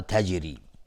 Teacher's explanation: تجری را ترقیق است چون کسره داره